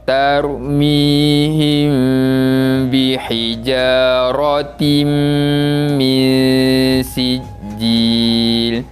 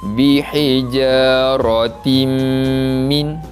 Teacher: Ianya berlaku pada kalimah bihijaratim min. Tanwin 2 di bawah pada huruf ta bertemu dengan huruf mim. Pun sama, perlu dibaca dengan bacaan dengung.